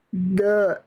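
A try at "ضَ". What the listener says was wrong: Jangan de, bukan de. Do, tebal, berbobot. Do. Oke, tinggal nanti dilatih pangkal lidahnya. Ya, lagi jadi bukan ujung lidah ke gigi raham ya Bunda, pinggir lidah Bunda boleh kiri boleh kanan, pilih salah satu, sentuhkan ke gigi raham atas. Lagi coba Bunda ikuti saya, bo. Nah, ini lebih bagus, tinggal angkat pangkal lidahnya.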